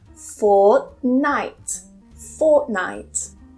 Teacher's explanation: I don't pronounce that T. I hold it, fort, and then I release it on the N.